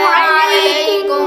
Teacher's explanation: علیکم عین کی آواز نکالیں گے اور لام کے بعد یا حروف لین میں سے ہے. علیکم کاف باریک ہے اور میم پر غنہ نہیں کریں گے. میم ساکن کے بعد با اور میم کے علاوہ کوئی اور حرف آ جائے تو غنہ نہیں کریں گے.